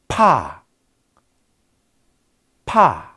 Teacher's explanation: 성도의 일부를 완전히 막았다가 뻥 터트리면서 나는 소리를 우리는 파열음이라고 합니다.